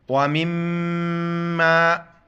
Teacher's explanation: میم جب بھی مشدد ہو یہاں پر جو ہے نا غنہ کریں گے، ساؤنڈ ان نوز. وَمِمَّا، واو زبر و، میم میم زیر میم، میم الف زبر ما، مما.